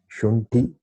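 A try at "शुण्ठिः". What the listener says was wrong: Shunti Visarga is there.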